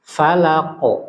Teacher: Tapi karena sifatnya itu isti'la, jadi suara E-nya itu tebal gitu. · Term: qalqalah